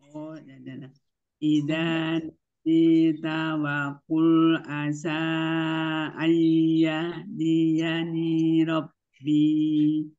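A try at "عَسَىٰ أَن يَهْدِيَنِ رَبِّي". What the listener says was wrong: Ninya jangan panjang ya, nirobi. Ayah dia nirobi.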